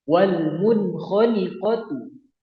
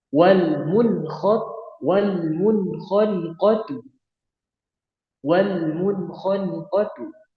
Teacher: Jadi tidak ditahan ya, tidak ditahan tapi jelas dan tanpa dengung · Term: izhar halki